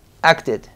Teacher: simplemente er sonido de T acá el sonido va a ser no es ni ID ni es Ed es exactamente un intermedio entre los dos